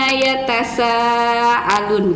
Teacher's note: Jadi ketika Ustazah menutup jari kemudian membuka ibu jari, membuka telunjuk, itu kadar pembacaan gunnah gitu, ya. Jadi dibacanya ditahan 2 harokat atau 2 ketuk